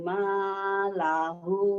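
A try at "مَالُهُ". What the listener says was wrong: luhu luhu bukan lahu luhu.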